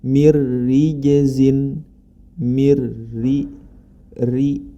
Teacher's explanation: Huruf ro berharokat kasroh, maka dia dibaca tipis. Jadi kesimpulannya, huruf ro dibaca tebal ketika ro tersebut berharokat fathah dan dhammah. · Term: ro dibaca tipis